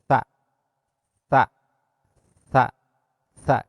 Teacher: Sa ieu huruf kaluarna ujung lidah didorong kana gigi depan, jero gigi, gigi depan. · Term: huruf sa